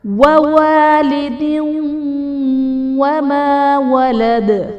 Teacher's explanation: وَوَالِدٍ وَمَا وَلَدَ، وَوَالِدٍ میں دال کے نیچے دو زیر کی تنوین، تنوین کے بعد حروف یرملون میں سے واو ہے تو یہاں پر ادغام مع الغنہ کا قاعدہ ہوگا، یعنی تنوین میں ہم غنہ کر کے پڑھیں گے